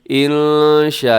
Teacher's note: اس میں کیا ہوتا ہے کہ 4 سیکنڈ تک آپ نے اس کو لمبا کرنا ہے. انشاء، یہاں نون ساکن کے بعد شین ہے تو یہاں اخفا کیجیے گا. شاء، یہ بڑی مد ہے کیونکہ حروف مدہ کے بعد حمزہ اسی لفظ کے اندر ہے.